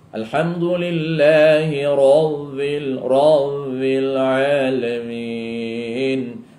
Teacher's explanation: Sebenarnya ciri huruf ba dia bertempuh dengan dua bibir sahaja. Syafatain dia panggil.